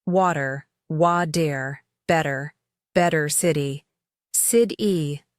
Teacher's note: In American English, when a t is between two vowel sounds, it usually turns into a soft d sound. We call this the flap t.